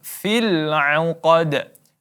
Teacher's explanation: Ya, huruf qaf ditebalkan. Kemudian di akhirnya ada qalqalah wusta, maka kita pantulkan.